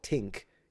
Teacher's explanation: he doesn't pronounce the TH. He pronounces it like a T.